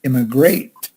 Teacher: Immigrate, the emphasis is on the last syllable, great.